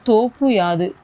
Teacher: இது வந்து தன்னோட ஒரு மாத்திரை அளவுல இருந்து அரை மாத்திரை அளவா குறைஞ்சு ஒலிக்குது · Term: குற்றியல் இகரம்